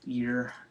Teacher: So long E plus a tongue curl will be, yikes, will be a, there we go, long E plus a tongue curl will be ear